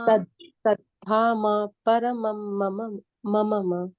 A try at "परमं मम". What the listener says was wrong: अब कितने म बोल दिए माता जी। कितने म छोड़ा है? परमम मम।